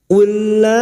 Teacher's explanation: Cara membacanya cukup masuk pada huruf lam berikutnya tanpa ditahan, tanpa mendengung, ya. Jangan dibaca ullah, ullah, tidak perlu ditahan, hanya masuk pada huruf lam yang kedua. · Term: idgham mislain